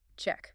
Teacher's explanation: Make sure the C sound is sharp. Not a she sound